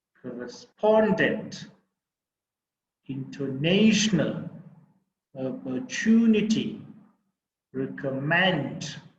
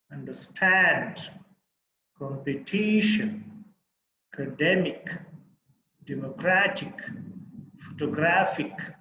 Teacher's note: so these are the third syllable stressed words